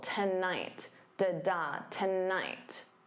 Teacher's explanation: So notice that syllable stress. The first syllable is unstressed. So to becomes that unstressed t. And then night is your stress syllable.